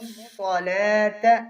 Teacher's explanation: صاد کو موٹا کریں گے اور لام کے اوپر کھڑی زبر ہے اسے ایک الف کے برابر کھینچیں گے